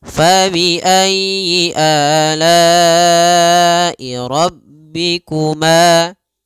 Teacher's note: pada lafal ma ada mad tabi'i panjangnya 2 harokat. Fabi ayyi ala'i rabbikuma.